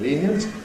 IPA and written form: ˈliːnjənt (lenient)